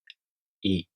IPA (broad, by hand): i